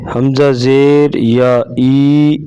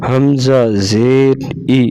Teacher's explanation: زیر کو معروف پڑھیں گے، مجہول نہیں پڑھیں گے۔ اور زیر کو اتنا نہیں کھینچیں گے کہ یا کی آواز آئے، یعنی یا بن جائے۔ جیسے حمزہ زیر ای پڑھیں گے، حمزہ زیر یا ای نہیں پڑھیں گے، ای کو لمبا نہیں کریں گے۔